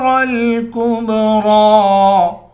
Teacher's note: آخر میں را ہے، را پر کھڑا زبر ہے، اس کو موٹا بھی پڑھیں گے اور ایک الف کی مقدار کھینچ کر بھی پڑھیں گے